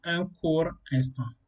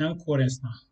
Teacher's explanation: lorsqu'un mot se termine par un R et une consonne muette, la liaison se fait avec le R. Et donc, même si on a autre chose, après ça, il faut viser le R.